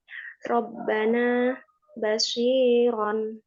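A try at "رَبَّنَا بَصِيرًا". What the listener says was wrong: Rabbana coba ditebarin lagi Mbak.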